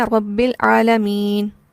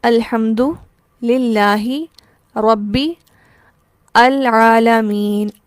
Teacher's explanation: یہ جو بیچ میں ایک الف سا ہے ہم اسے نہیں پڑھ رہے، ہم با کو ڈائریکٹ لام سے ملا رہے ہیں، ہم پڑھ رہے ہیں رب العالمین، ٹھیک۔ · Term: حمزہ وصلی